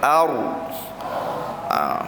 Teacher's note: Ra itu dimuncungkan sedikit, bukan muncung terlalu berat, tapi muncung dalam keadaan yang tebal. Yang mana dihukumkan ra tersebut dia itu dimuncungkan kerana sifatnya itu tebal. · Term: tafkhim